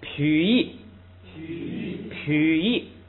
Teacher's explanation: 前不降，所以还不能痞喻，不能降下来，只能升，所以变成二声